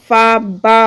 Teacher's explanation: फा क्या है, ओष्ठ है और महाप्राण है